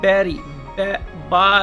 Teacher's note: that is a bilabial sound, दोनों होंठ को मिला के बोलते हैं तो बा निकलता है